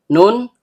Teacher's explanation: Nun ujung lidah bertemu dengan langit-langit bagian tengah. Karena nunnya berharakat fathah diikuti alif, maka di sini seharusnya terjadi mad thobi'i.